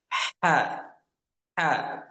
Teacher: Huruf ha ini kita baca dengan tipis ya. Ha ha ha dan nafasnya itu terdengar.